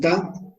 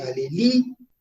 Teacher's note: fuerza de voz en la última sílaba